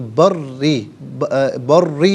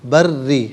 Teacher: بری میں را کے نیچے زیر ہے تو را کو باریک پڑھیں گے، تو بری نہیں بری، ٹھیک ہے، را کو باریک کر کے پڑھا جائے گا۔